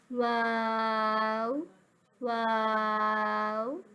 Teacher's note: واو جو ہے وہ دونوں ہونٹوں کی گولائی سے ادا ہوگا